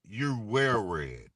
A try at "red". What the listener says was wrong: I'm sorry, but that sounded like W.